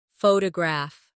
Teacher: The stress is on the first syllable. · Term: word stress